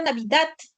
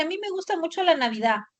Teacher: cuando la d está al final de la palabra, muchas personas no lo pronuncian.